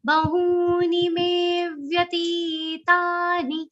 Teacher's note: Me is a long sound and it will be followed by a subtle aghat of va. · Me is long, vya is short, ti is long, ta is long, ni is short.